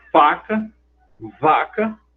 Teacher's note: a lábio dental que o lábio inferior toca nos dentes superiores